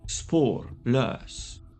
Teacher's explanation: le chiffre 2 va mettre deux fois l'inflexion sur les deux parties du mot. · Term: accent tonique double